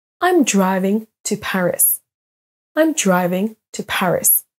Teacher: les r vont être beaucoup plus doux et ne sont pas prononcés comme en français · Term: le son r